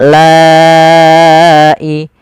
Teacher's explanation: La awalnya dua harakat. La karena adanya hamzah maka dia menjadi empat harakat atau lima harakat. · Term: mad wajib muttasil